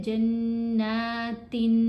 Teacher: अब जब हम तनवीन अदा करते हैं तो पढ़ा जाता है जन्नातिन, नून की आवाज़ आती है, उस आवाज़ को हमने नाक में छुपा कर पढ़ना है और एक हरकत के बराबर ठहर कर यानी गुन्ना करते हुए अदा करना है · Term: इख्फा